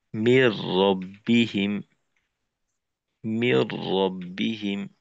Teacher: রতে তাজদিদ দিয়ে তারপর গুন্না ছাড়া মিলিয়ে পড়তে হবে